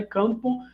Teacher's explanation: uma consoante nasal me diante da consoante labial da sílaba seguinte